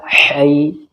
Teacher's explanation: ح یا زبر حی، ہا حلق سے نکلتا ہے، حلق کے بیچ سے